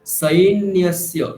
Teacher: সকার, ওখানে দন্তীয় স আছে, সুতরাং সৈন্যস্য